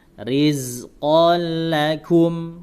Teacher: Tanwin langsung masuk ke lam, diidghamkan ke lam.